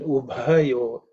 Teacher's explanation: the bha is also aspirated, which is the fourth letter in the pa varga.